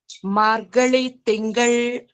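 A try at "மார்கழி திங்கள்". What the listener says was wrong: It's not la, it is ra. Margari Tingal.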